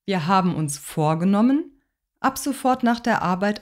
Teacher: im wort vorgenommen ist die silbe mit dem trennbaren präfix vor akzentuiert · das bedeutet dass wir im ersten teil des satzes eine steigende melody haben und im zweiten teil eine fallende melodie